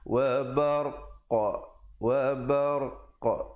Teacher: Waqaf dengan memberikan pantulan, kerana qaf bila kita berhenti padanya, huruf yang hidup diberikan tanda mati mendatang. Jadi sebab itu saya waqaf dengan wa barq, wa barq.